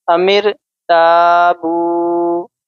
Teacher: تا ایک الف کے برابر کھینچ کر بولیں گے